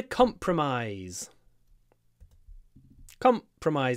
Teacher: the stress is at the beginning